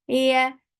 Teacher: lifting your tongue, middle part of your tongue up towards your palate, but you're not touching it. That is making ya very soft sound.